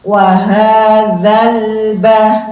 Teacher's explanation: Kalau zal pertemuannya dengan ujung lidah dengan gigi seri atas, sedikit dikeluarkan ya